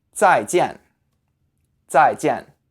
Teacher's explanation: with both of these words you say them with the fourth tone so it's a falling tone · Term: 4th tone